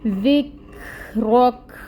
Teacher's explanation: کاف ساکن ہے، باریکی سے ادا ہوتا ہے، اور اس کی ہمس واضح کریں گے کیونکہ یہاں پہ یہ ساکن ہے۔